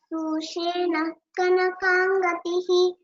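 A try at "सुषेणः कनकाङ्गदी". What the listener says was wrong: Only small correction in the first line. Kanakangadi. That's all. There is no visarga there.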